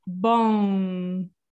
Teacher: make an end but you stop so it do like boom you see the lips never touch so it's kind of like between an m and and n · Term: nasal sound